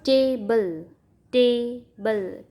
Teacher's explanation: ટેબલ, ટેબલ, ટે ઉપર ભાર આવે છે, બલ ઉપર નથી આવતો. Stress, unstress.